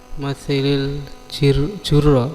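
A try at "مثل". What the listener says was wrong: Masil ya. Bukan masili, masil. Depannya itu tidak al tapi lam, masil gitu ya.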